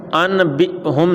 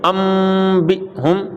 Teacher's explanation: یہ چھوٹا سا جو میم لکھا ہے، چھوٹا سا میم، اس کو پڑھیں گے، نون کو نہیں پڑھیں گے، جوڑ کریں گے لیکن پڑھیں گے میم کو، مم بقلیھا، مم، تو یہ میم پڑھیں گے، تو نون کو میم سے بدل کر اخفا غنہ بھی پھر کرنا ہے ساتھ میں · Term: اقلاب